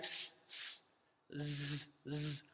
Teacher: The tip of the tongue touches the lower central incisors as well as the upper ones. So these are the central incisors, the front two teeth, top and bottom.